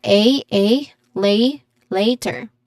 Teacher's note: there's a clear dip thong in the first syllable